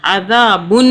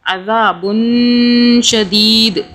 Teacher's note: حرف ہے تو ہم نے نون ساکن پہ اخفا کرنا ہے، یعنی کہ نون ساکن کو ہم نے 2 سے 3 سیکنڈ کے لیے چھپانا ہے، چھپا کے پڑھنا ہے ، جیسا کہ عذابن، یہ جو نون ہے یہ نون ساکن